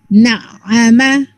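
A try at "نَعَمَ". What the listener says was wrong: No jerking, and ayin is light, just in the middle. Na'ama. Na'ama.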